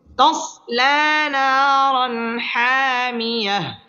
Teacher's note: তানবিনের বামে হা আসছে হা ইজহারের হরফ গুন্নাহ ছাড়া স্পষ্ট করে পড়তে হবে